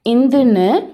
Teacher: பல் ஒலியான இந்துன்னு சொல்கிறப்ப நாக்கோட நுனி மேல் பல்லோட அடிப்பகுதியை தொடும். அப்போ பார்த்தீங்கன்னா நாக்கோட நுனி நல்லா விரிஞ்சு அழுத்தமாக இருக்கும்.